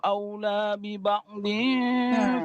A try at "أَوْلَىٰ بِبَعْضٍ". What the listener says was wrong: Panjang dikit. Aula, bukan aula bi aula. Panjang enggak? Dua alif.